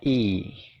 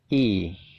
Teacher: Nah, bacanya itu i, nyengir gitu ya, jadi agak panjang. Suaranya adalah i, kayak gitu ya.